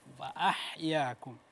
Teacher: Ha kecilnya kurang tadi sedikit Pak ya, agak ditekan